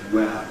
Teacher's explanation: perhaps one third of Americans have followed our lead in dropping the [h] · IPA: [weə]